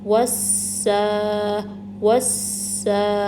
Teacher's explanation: پہلے واو کو سین ساکن سے ملانا ہے، تھوڑا سا ٹائم دینا ہے، پھر سین کو حرکت کے ساتھ پڑھنا ہے۔ اس پہ کھڑی زبر لگی ہے تو اس کو 2 کاؤنٹ سٹرچ کریں گے، تو اس کو ہم پڑھیں گے وسا وسا۔ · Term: سین تشدید